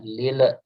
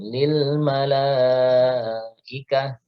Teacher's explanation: semestinya lam tidak boleh dipantulkan